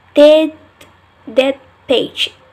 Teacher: The alveolar t change to p because the second word page began with a p. It happened when the final consonant affixed in the initial. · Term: regressive assimilation